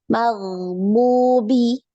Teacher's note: Ya, di ghainnya jangan sampai mantul. Ngalir ya.